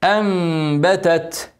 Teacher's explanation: نون ساكنه بعدها باء هنعمل اقلاب هنغني حركتين ونقلب النون الساكنه ميم